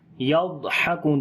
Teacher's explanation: مِنَ الْكُفَّارِ, کف یعنی کہ سانس جاری کریں گے فا کے اندر, کف. یضحکون، ضاد کو موٹا پڑھیں گے، یہاں پر صفت استطالت ہوگی